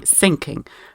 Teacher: german speaking people or people who are natively german have a little problem with the thorn sound they substitute it with s